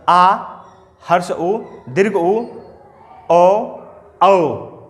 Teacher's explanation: जीभ का पीछे का भाग इन स्वरों के उच्चारण में काम करता है। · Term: पश्च स्वर